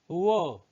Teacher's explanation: जब आप होंठ और ऊपर वाला जो दांत है उनको जब मिलाते हैं तब बनता है व, ठीक है। नीचे वाला होंठ और ऊपर वाले दांत जब आपस में मिलते हैं तब इसका उच्चारण होता है। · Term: दंतोष्ठ